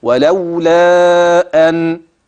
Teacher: عند الوقف النون واضحه اه وباينه